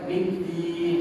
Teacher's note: middin huruf dal berbaris kasrah, iaitu dal berbaris bawah ni tuan-tuan, bacaan dia tidaklah terlalu tebal.